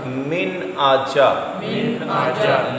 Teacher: غنہ نہیں کرنا، اظہار کرنا ہے، یعنی نون کی آواز کو ظاہر کرنا ہے۔